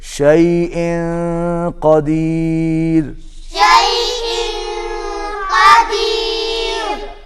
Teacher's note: اخفا ہوگا، آواز ناک میں جائے گی